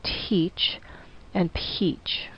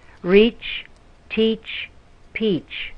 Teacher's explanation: in English teach and Peach the T and the P are aspirated so there's a bit of an H sound